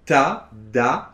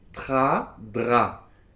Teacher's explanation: Alors une astuce que je vous donne, vous n'êtes pas obligés de la suivre mais c'est une astuce qui est très bien, c'est que vous essayez de faire le T et le D avec la langue en bas, collée derrière les dents de devant